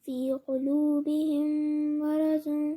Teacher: دونوں میم جو ہے مل جائیں گے اور غنہ سے پڑھے جائیں گے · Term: ادغام میم ساکن